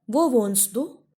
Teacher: Here you have to stress on wohnst.